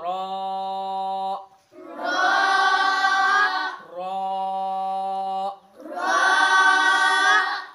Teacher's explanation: জিহ্বার মাঝের অংশ তালুর সাথে লেগে কি উচ্চারণ হয়? রা উচ্চারণ হয়। যেমন র র জিহ্বার মাঝের অংশর দুই সাইড এবং তালুর সাথে মিলে রা উচ্চারণ হয়। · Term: রার উচ্চারণ